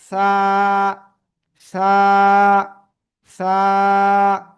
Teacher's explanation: 2 দাঁতের আগায় লাগান, লাগিয়ে নরম আওয়াজে আপনি এটা উচ্চারণ করবেন · হালকা বাতাস বের হতে হবে, জিহ্বার আগা উপরে 2 দাঁতের আগায় লাগিয়ে বাতাস বের করতে হবে,